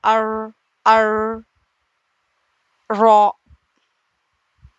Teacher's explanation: اور آگے رو زبان کی پشت والا کنارہ اوپر والے دانتوں کے مسوڑے. زبان کی نوک اوپر والے دانتوں کے مسوڑوں سے مل کر ار ادا ہوتا ہے.